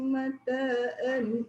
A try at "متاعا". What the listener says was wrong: Mata'an, jangan mataan. Mata'an.